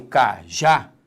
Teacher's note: Quando eu falo cajá, repare que a sílaba tônica é a última. Isso nos dá uma, vou escrever aqui, ó, uma oxítona.